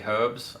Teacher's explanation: in Australia we would say herbs and pronounce the h